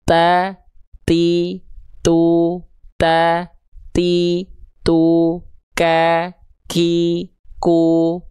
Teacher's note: Tapi untuk pengkhususan dua huruf, yaitu huruf kaf dan huruf ta, dia ada percikan saja. Nafasnya bukan mengalir. Ya, cukup dipercikan. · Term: hams